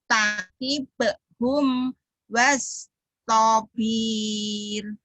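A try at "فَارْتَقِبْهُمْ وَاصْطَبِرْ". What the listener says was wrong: Pendek. Wastobir.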